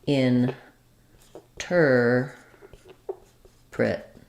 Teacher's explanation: Interpret is stressed on the ter syllable. So we have a reduced in, and then we have our stressed ter, and then prit, we have an I vowel, a reduced sound at the end.